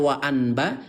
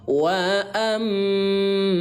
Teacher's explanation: Mengganti suara nun mati menjadi bunyi mim ya. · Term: iqlab